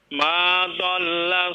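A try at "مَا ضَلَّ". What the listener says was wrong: Ma dhalla, coba ditebalkan huruf dhad, huruf gha juga ghawa ditebalkan ya. Bukan dol.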